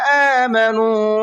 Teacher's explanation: آمنوا نون کو کھینچ کر کے پڑھیں گے، اس لیے کہ نون کے بعد میں واو مدہ ہے اور واو مدہ کو کھینچ کر کے پڑھتے ہیں۔